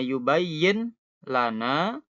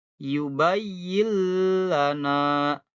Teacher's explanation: nunnya hilang jadi lam. Langsung ke lam ya. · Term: idgham